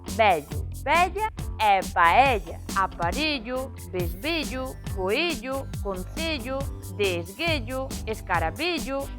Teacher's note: Todas as palabras acabadas en ello, ella son pechadas a gas. Vello, vella e paella.